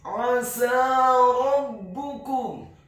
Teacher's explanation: huruf sin-nya dibaca fathah 2 harokat karena harokatnya tegak, dan setelahnya seperti ada huruf ya sukun yang fungsinya menambahkan 1 harokat.